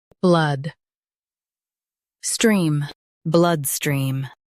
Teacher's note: Emphasize blood and blend stream smoothly.